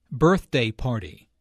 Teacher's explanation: notice that the normal stress for a compound noun falls on the first element of the compound